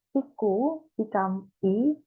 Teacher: Last syllable ku is lost. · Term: syncope